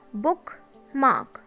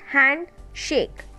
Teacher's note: स्पॉन्डी metre में दो sounds, दोनों सिलेबल लॉन्ग साउंड के साथ आते हैं. Long sounds means stress sounds. · So examples are बुक मार्क, both are stressed, and next one is हैंड शेक, both are louder, both are stressed, both are accented